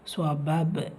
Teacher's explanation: பா சுக்குன் பெற்று வந்திருக்கு, கல்கலத்துல் சுக்ரா சிறிதாக அசைச்சு ஓதணும்